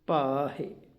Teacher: ਜਿਵੀ ਬਸੰਦੀ ਪਾਣੀਐ ਇੰਦਣ ਰਖੈ ਭਾਹਿ ਭਾ ਭਬੇ ਨੂੰ ਕੰਨਾ ਹਾਏ ਸਿਹਾਰੀ ਹਾਹ ਸਿਹਾਰੀ ਦੀ ਆਵਾਜ਼ ਹਲਕੀ ਹੈ ਇਸ ਕਰਕੇ ਭਬੇ ਦਾ ਕੰਨਾ ਲੰਮਾ ਹੋਵੇਗਾ